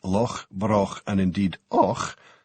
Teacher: The ch sound, as in loch, broch, and indeed och, is a soft, sibilant noise, made at the back of the mouth, with the tongue drawn back and upwards. It sounds a bit like distant surf, if you want to get romantic about it.